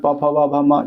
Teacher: प फ ब म ये ओष्ठ व्यंजन आता है।